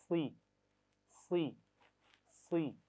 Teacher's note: सुई नहीं पढ़ना, होंठों को गोल नहीं करेंगे